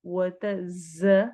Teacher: ज सख्ती से सीटी वाली आवाज के साथ